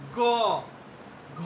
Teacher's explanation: গ, ঘ এটা আমাদের বাকযন্ত্রে বেশি ঘর্ষণপ্রাপ্ত হলো এবং বেশি জোর দেওয়া লাগলো। এই কারণেই এই যে অঘোষ যেটা হলো অল্প ঘর্ষণপ্রাপ্ত হয় বা কণ্ঠ অল্প অনুনাদিত হয়, সেটা হলো অঘোষ, এবং যেটা বেশি ঘর্ষণপ্রাপ্ত হয় এবং কম্পনটা বেশি হয় সেটা হলো ঘোষ বর্ণ।